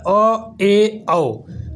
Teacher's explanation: अर्धविवृत स्वर, आधा मुंह आधा खुला रहता है